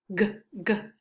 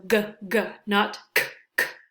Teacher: the back of our tongue, the back of it touches the back of the roof of our mouth. The air stops briefly, g, g, and it is a voiced sound.